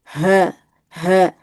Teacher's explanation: Jadi, dadanya yang bergetar bukan di daerah pita suara.